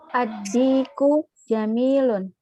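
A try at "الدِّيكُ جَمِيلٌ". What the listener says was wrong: Sahih.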